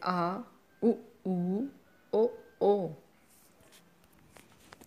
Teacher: जिन स्वरों के उच्चारण में जिह्वा का पिछला भाग प्रयोग में आता है वे स्वर पश्च स्वर कहलाते हैं, जैसे आ, उ, ओ।